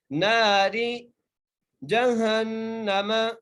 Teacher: اچھا ناری کا جو را ہے نا، را کو بری کر کے پڑھنا ہے، کیونکہ را کے نیچے زیر ہے